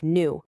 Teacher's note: dropping the Y sound in words like new